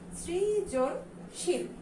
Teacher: এটার উচ্চারণ কিন্তু কোনোভাবেই ছয়ের মতো না, সিল কিন্তু না, এটার উচ্চারণটা কিন্তু হচ্ছে শিল